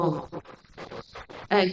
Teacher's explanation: If you just go you'll see that in the guttural position, the sound is struck at and u at the lips. And ma, the anunasik, is traveling up through the nasal passage.